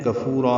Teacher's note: کفورا میں کاف باریک ہے. فو واو مدہ را مد عوض الف مدہ 2 حرکات لمبا کریں گے